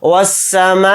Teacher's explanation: اس مد کو ہم 4 الف کی مقدار کھینچ کر پڑھیں گے، یعنی یہ مد متصل ہے۔